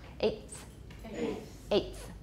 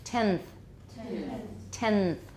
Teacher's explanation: the t is going to be dental